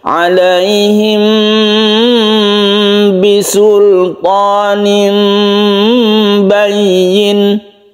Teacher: asalnya itu memang dia itu sama-sama makhrajnya yaitu di bibir antara mim dan ba Oleh karena itu samarnya itu memang tidak ketara tapi Aslinya memang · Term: Ikhfa Syafawi